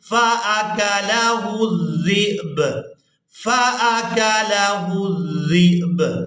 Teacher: अब ज़ाल को हमने हमज़ा साकिन और बा साकिन के साथ मिलाते हुए इस तरह से अदा करना है, ज़ाल हमज़ा बा ज़ेर ज़िब, ज़िब झटके के साथ अदा करेंगे और आखिर में बा की आवाज़ को भी अदा करेंगे